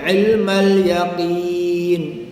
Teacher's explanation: Ilmal yaqin, ikut ilmal yaqin. Dekat sini lam mati, bukan lam sabdu kan, maka kita ringankan lam.